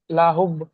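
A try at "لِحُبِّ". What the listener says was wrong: লিহুব, লামজের লি, হা বাপে সহুব, লাহুব নয় লিহুব।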